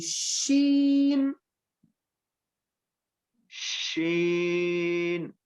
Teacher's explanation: شین کو ادا کرتے وقت آواز منہ میں پھیل جائے گی